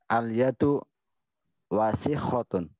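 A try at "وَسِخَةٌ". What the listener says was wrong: Ya, jadi wahnya jangan panjang karena tidak ada alif situ. Jangan wasikhun tapi wasikhun. Jangan wasikhotun tapi wasikhotun.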